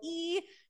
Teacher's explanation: you can feel it is high and in the front of the mouth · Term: high vowel